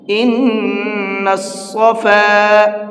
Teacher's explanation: صاد کو منہ بھر کے پڑھا جاتا ہے اور سین کو نارملی پڑھا جاتا ہے، تو آپ کو یہاں تھوڑا سا منہ بھر کے پڑھنا ہے۔